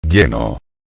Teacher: la E de plenum es cerrada y se conservó sin alteraciones.